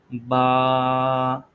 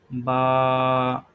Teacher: یہ دونوں ہونٹوں کے تر حصے سے ادا کیا جاتا ہے، یعنی دونوں تر حصوں کو آپس میں ملائیں گے